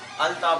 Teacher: تا شمسیہ میں سے کس میں سے ہے اس لیے لام کو تا کر دیا. یعنی اب کیا کر دیا ات تا تو دونوں ایک جنس کے ہو گئے، پہلا ساکن دوسرا متحرک، یہ شرط بائی کے ادغام کی، لہذا سے ادغام کرنا لازم ہوا۔